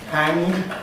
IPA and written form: hæŋg (hang)